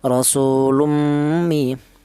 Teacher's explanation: Di sini ada rasulummi, yaitu ada tanwin. Di mana tanwin ini berjumpa dengan huruf mim ini dibaca idgham bighunah.